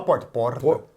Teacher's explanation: Quer dizer, é o mesmo R, retroflexo.